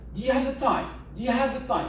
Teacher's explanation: Et l'intonation va être sur time.